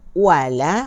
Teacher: Wala, wa 1 harakat, la 2 harakat